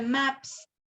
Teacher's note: en el caso de maps, la P es sorda y la S del plural en su plural se vuelve sordo también